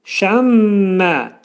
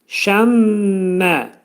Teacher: Burun daxilində 2 saniyə müddətində sıxılacaq və 2 saniyə müddətində dediyimiz kimi saxlanılmalıdır. Və bir də deyirəm, şəmmə, şəmmə şəklində deyib tələffüz edirik. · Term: ğunnə